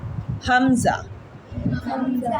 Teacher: हलक के आखरी हिस्से से